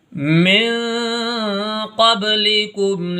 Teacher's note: नाक में आवाज़ ले जा करके पढ़ेंगे, इसको इख्फा कहते हैं